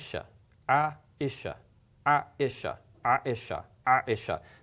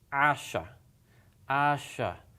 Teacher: that clipping sound tells you that there is a hamsa in it